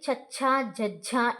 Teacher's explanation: తాళవ్యాలు అంటే మనం దౌడతో పలుకుతామన్నమాట.